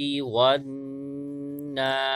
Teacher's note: واو کے بعد نون مشدد ہے لہذا یہاں غنہ کریں گے